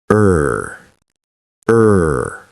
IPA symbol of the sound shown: ɜː